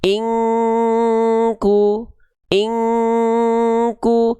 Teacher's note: Udah nggak ada lagi n-nya, nggak dibaca inku tapi ing. Nah, ketika disamar dengungkan, pelafalan kita siap-siap melafalkan huruf kaf dengan penahanan, dengan ditahan kadarnya 2 harokat. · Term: ikhfa